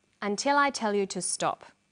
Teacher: did you hear the falling tone at the end